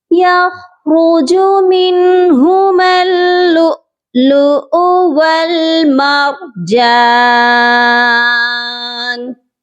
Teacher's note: کیونکہ دونوں کے اوپر حمزہ ہے، لیکن فرسٹ والے حمزہ کو آپ نے جھٹکا دے کر پڑھنا ہے، اور سیکنڈ والے کے اوپر حرکت ہے، اس کو بنا جھٹکے اور بنا کھینچے آپ نے پڑھنا ہے